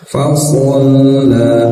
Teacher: Fasalla, so ya, jangan bukan so ya, sama dengan sin makhrajnya tapi lidahnya diangkat ke langit-langit jadi terdengar tebal. Fasalla, lam bertasdid tekan saja dan biarkan dia mengalir, jangan terputus suaranya.